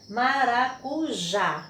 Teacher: com 4 sílabas e a última sílaba é a tônica então a palavra maracujá a última sílaba e tônica essa palavra é oxítona